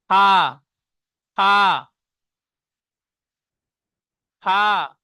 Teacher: নিচের ঠোঁটের ভিজে অংশ এবং সামনে উপরে এই দুই দাঁতের আগার সাথে লাগিয়ে উচ্চারিত হয়